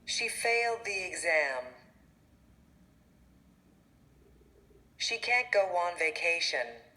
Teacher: notice how these vowels are linked using the w sound and the j sound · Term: linking